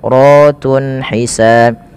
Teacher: karena ra-nya dibaca berharakat fathah, maka dia dibaca dengan tebal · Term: tafkhim